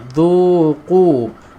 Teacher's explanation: Dhu kena keluarkan hujung lidah ni tuan-tuan dan puan-puan